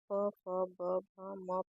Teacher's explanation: इन ध्वनियों का उच्चारण होठों से होता है। इसलिए इन्हें ओष्ीय व्यंजन कहते हैं। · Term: प वर्ग